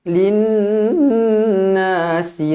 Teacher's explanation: Nun yang bertanda sabdu wajibul ghunnah dengung dua harakat